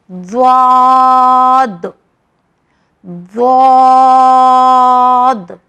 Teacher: یہ واحد ایک ایسا لیٹر ہے جس کی مخرج سب سے الگ ہے. یہ زبان کے آخری حصے سے نکلتا ہے, زبان کے کنارے سے نکلتا ہے